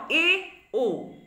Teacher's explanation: দেখা যাচ্ছে যে উচ্চ বিন্দু যে রয়েছে সেই স্থান থেকে 2/3 নেমে আসছে, উচ্চ বিন্দু থেকে 2/3 নেমে আসছে জিহ্বাগ্র, যখন আমরা এ আর ও এই দুটি স্বরধ্বনি উচ্চারণ করছি